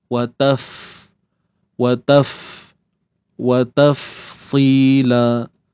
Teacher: Makhraj bagi huruf fa, bahagian perut bibir bawah ni, bahagian yang kawasan yang basah tu, kawasan yang lembap tu, kita tekan pada gigi kacip atas.